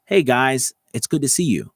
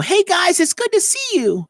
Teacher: I maybe changed the pitch a little bit, but what I did was I made it a little bit softer, maybe a little bit more breathy.